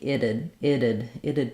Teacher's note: we have first syllable stress the I vowel and then this T is flapped